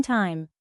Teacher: The tongue moves from low front to high front.